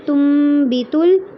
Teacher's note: تم بیتل میں نون کی آواز کو میم سے بدل کر پڑھنا ہے